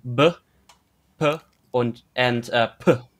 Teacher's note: a distinction with stops that is a voiceless, a voiced, and a voiceless aspirated